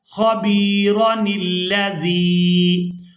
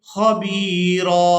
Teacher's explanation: را کو بغیر کھینچے ہی ادا کرنا ہے، خَبِيرًا الَّذِي۔ اور اگر ہم یہاں پر وقف کر دیں گے تو پھر ہم را کو کھینچ کر ادا کریں گے